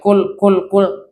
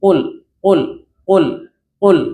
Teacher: Sifatnya yang pertama jahar. Tidak boleh keluar hams.